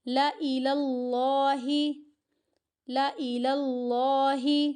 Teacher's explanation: لام کی اپنی زبر ہے اور اس حمزہ کی اپنی زیر ہے، تو اس لیے لام کو ہمیں کھینچنا نہیں ہے